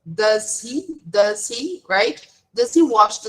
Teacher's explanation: notice how does blends with he and she.